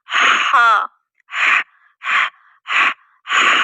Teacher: हल के दरम्यान हिस्से से यानी कि वसतु हल्क से · ہا کہاں سے ادا ہو رہا ہے؟ زبان نہیں، حلق کے درمیانی حصے سے، یعنی کہ وسط الحلق سے